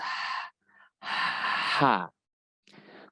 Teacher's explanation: ha ini memiliki sifat rokhah atau mengalir, maka kita biarkan dia mengalir terlebih dahulu sebelum kita ucap. Atau ketika dia mati, maka kita biarkan dia mengalir.